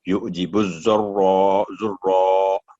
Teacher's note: را کو پر کر کے الف کی وجہ سے آواز لمبی ہوگی